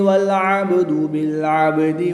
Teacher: با ساکن ہے تو یہاں پر قلقلہ خوب ظاہر کریں گے